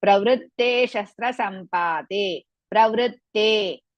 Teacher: Te is the only word which is dirgha. The pra and ru is risva.